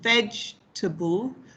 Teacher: So in a word like vegetable, okay, so we have the stress on veg, the first syllable, vegetable.